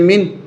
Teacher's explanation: نون ساکن کے بعد حمزہ آ رہا ہے، اس لیے اس نون ساکن پہ غنہ نہیں ہوگا